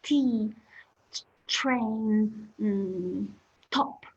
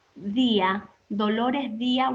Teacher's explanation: we produce da with your tongue touching the same place as ta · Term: alveolar